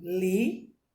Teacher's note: Por que oxítona? A sílaba tônica é a última.